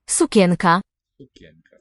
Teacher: And the E vowel is a Y sound, a yod.